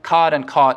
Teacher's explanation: cod and caught sound distinct here like they do in most of the south and the east